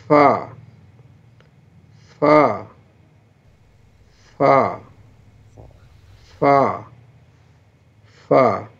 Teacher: اوپر کے دانت کا کنارہ اور نیچے کے ہونٹ کے تری والے حصے سے